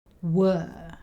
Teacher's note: Were is one of those small words that we can say very quickly and it ends up sounding like W. W and the schwa sound.